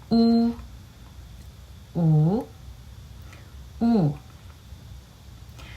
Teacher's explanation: pronounced by rounding the lips but the lips are pushed further forward compared to when pronouncing o